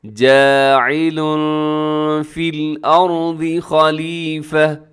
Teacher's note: تنوین ہے لام کے اوپر اور تنوین کے بعد فا حروف اخفا میں شامل ہے تو اپنے آواز کو یہاں پر کیا کرنا ہے، اخفا کرنا ہے، جاعل فی الارض خلیفہ، خلیفتن، لیکن وقف کریں گے تو تا کو ہا سے بدل کے خلیفہ ایسے ہو جائے گا۔